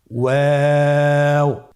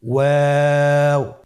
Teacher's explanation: 2 ঠোঁট গোল করে মাঝখানে ফাঁক রেখে হরফটি উচ্চারণ করতে হবে।